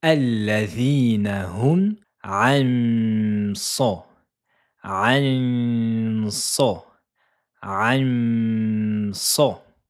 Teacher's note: Mais attention, ici elle est coloriée en vert pour signaler qu'il faut faire un nasillement, mais on a une règle de tajwid qui s'appelle al-irfa. On va dissimuler la lettre Noun et préparer la lettre suivante, c'est-à-dire dissimuler. · On ne touche pas le point de prononciation de la lettre Noun. On ne va pas mettre la langue ici au début du palais. On va préparer la lettre suivante.